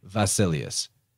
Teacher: in the modern Greek they would actually pronounce that beta like a V